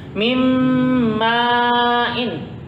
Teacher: Masukkan ke hurufnya, ke huruf di depannya. Mim tahan 2 harokat sebagai menunjukkan dengungnya biar nyata.